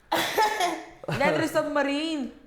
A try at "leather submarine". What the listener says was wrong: You gotta enunciate the R, I believe, more.